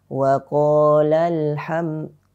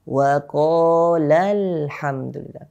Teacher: Wa qalal ham, datar saja. Tapi yang harus kita lakukan adalah dengan menaikkan sedikit suara pada lafadz lal